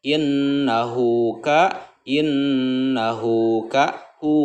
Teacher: Kalau mad silah qasirah dibacanya itu pendek 2 harokat, jangan dibaca terlalu panjang. Innahu hu 2 ketegalan mad silah qasirah.